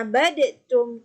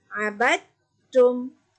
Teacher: jangan bunyikan huruf dal. Kita masukkan terus huruf ta.